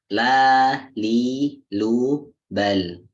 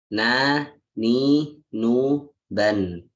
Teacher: kita membacanya antara syiddah dan rokhwah, antara kuat dan lembut. Jadi pertengahan. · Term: lin umar